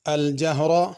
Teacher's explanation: الجہر را کو پر پڑھنا ہے